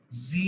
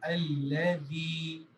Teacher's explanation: میری زبان کی ٹپ میرے دانت کے ٹپ کے ساتھ ٹچ ہو کے دال کا مخرج نکال رہی ہے، جس طرح دال کو نکالا جاتا ہے.